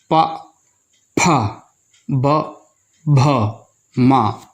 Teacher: इन्हें बोलते समय ओष्ठ आपस में मिलते हैं। 2 होठों को बिना मिलाए इन अक्षरों का उच्चारण हम नहीं कर सकते।